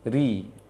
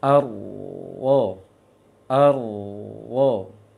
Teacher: Kalau ro tipis, tengah lisan dengan pangkalnya tidak ikut menyempit, tidak ikut meninggi dia.